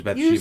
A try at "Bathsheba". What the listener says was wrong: You said Beth, but it's Bath. Bath. Like take a bath. Bathsheba.